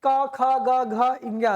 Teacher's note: तो इसमें कंठ से आ जाता है क। उच्चारण की दृष्टि से क वर्ग के सभी कंठ से आते हैं।